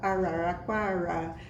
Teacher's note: todos os erres de uma palavra como essa ficam retroflexo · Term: R retroflexo